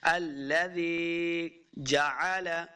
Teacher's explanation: الذی یا مدہ ہے، اس کو 2 حرکات لمبا کر کے پڑھنا ہے